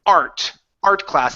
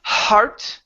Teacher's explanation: you have to work on removing that H that H cannot be there